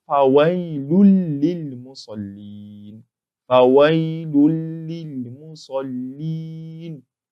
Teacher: the Nuun in that Tanween is entered completely into this lam that's in green.